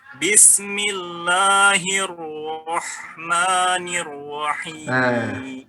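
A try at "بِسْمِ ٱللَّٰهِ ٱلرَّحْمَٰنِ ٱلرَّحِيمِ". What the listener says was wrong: kalau saya boleh kritisi bibirnya agak ke depan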